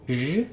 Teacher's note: That's basically the same shape as an SH, sh, but my voice is on. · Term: zh sound